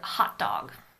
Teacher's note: in an alveolar consonants and dog starts with an alveolar consonant so when you say hot you don't aspirate the T